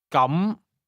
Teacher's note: say, in that case, or then, using a mid-rising tone.